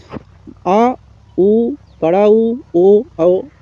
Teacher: जीवा के पश्च भाग से उच्चारित होने के कारण पश्च स्वर